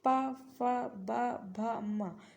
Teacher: जब आप पा बोल रहे हैं तो देखिए सिर्फ ओस्ट आपस में जुड़ रहे हैं